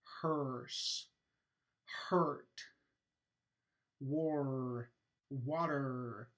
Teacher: with a sound kind of r ish for example hearse hearse i'm not actually pronouncing a vowel and then the r the vowel and the r are merging together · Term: r coloring